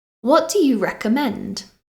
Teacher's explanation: Do you hear my voice go up at the end? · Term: intonation